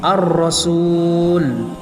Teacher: alif lam bertemu dengan ra, maka lamnya itu tidak dibaca langsung kepada huruf ra, ar-rasul, sehingga seakan-akan lamnya itu tidak ada. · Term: alif lam syamsiah